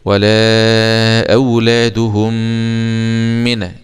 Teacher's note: إضغام بغنة، إضغام الميم في الميم، إضغام مثلين صغير